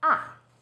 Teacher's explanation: Fourth tone, 四声, starts high, then falls sharply.